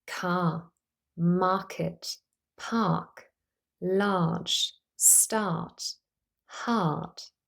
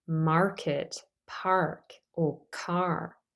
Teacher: I've pronounced all of these words with a non- rotic accent that means I only pronounced a long a but not the letter R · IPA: /a:/